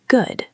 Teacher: When you say good with a falling tone like good, low pitch, it sounds like a period. It sounds like the end.